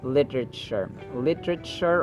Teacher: Actually t is pronounced as d sound to sound like an American speaker